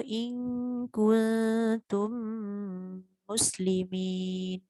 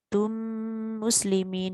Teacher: apabila mim sakinah ataupun mim mati bertemu dengan huruf mim yang sama dengan dia, maka wajib dibaca dengan dengung dengan kadar 2 harakat. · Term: idgham mithlain shaghir